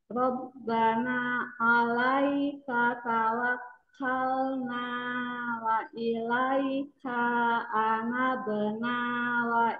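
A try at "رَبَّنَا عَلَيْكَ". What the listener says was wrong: Oh, juga nggak boleh. Wa ilaika ini kakaknya semua satu harokat ya.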